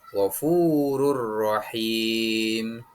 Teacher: Idgham bilaguna dibaca dengan tanpa mendengung.